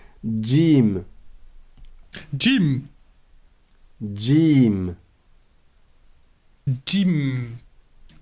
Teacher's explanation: c'est pas vraiment un dé parce que le D est avec le bout de la langue or la lettre Jim elle est plus en retrait plus vers le milieu de la bouche mais c'est un peu comme s'il y avait un D devant